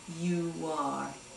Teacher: a W sound that you hear between the U and the R sound of you are